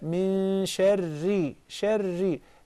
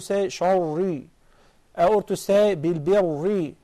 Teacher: It is a fault to say sharri, or to say bilbirri, because the ra is thin, is not fat. Is muraqqaqa, not mufakhama.